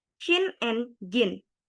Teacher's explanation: Affricates are a combination of a plosive and a fricative, or sometimes they are called affricate plosive. The sound begins with a plosive with a complete closure, but at the same time, they have a very slow release, then moving backwards to a place where a friction can be heard, palate alveolar.